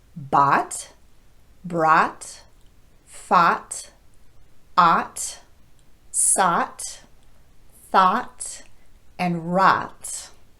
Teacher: In American English, probably the most common pronunciation of OUGH is the short vowel ah.